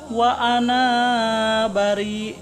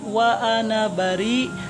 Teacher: hamzah di dalam lafaz ana di sini bukan hamzah mad ya. Jadi jangan dibaca panjang, jangan seperti ini, jangan wa ana bari, tapi wa ana bari. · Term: hamzah harfiah